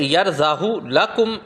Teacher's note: اس کلمے میں ہائے ضمیر کو کھینچ کر پڑھنے کی بجائے بغیر کھینچے پڑھیں گے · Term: مستثنیات